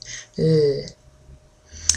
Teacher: it's a voice sound, comes from my throat, and I just breathe out through my mouth